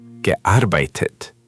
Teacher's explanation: Just put a touch more weight on the Arbeit in the middle.